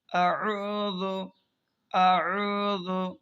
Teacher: شروع حلق سے آ، اور یہاں پر کیا ہے عین، تو عین کو درمیان حلق سے تھوڑا سا دباؤ ڈال کر اس کو ادا کریں گے